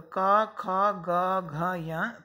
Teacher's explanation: इनको ध्वनि करते समय हमारे कंठ पर जोर पड़ता है। कंठ पे जब हम हाथ रखेंगे, इनका उच्चारण स्थान बोलेंगे तो क, ख, ग, घ, या, तो सुनाई देगा हमें, यहाँ जोर पड़ेगा कंठ पर, तो ये कहलाएंगे कंठ वर्ण, माने इनका उच्चारण स्थान कंठ है।